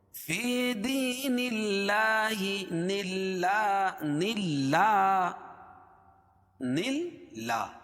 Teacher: اللہ کے لام سے پہلے زیر ہے اس لیے اللہ کا لام باریک ہوگا، پر نہیں ہوگا، موٹا نہیں پڑھائے گا. فی دین اللہ، اللہ کے لام پر کھڑا زبر ہے، کھڑا زبر قائم مقام الف مدہ کہ اس کو ایک الف کے برابر کھینچ کے پڑھتے ہیں.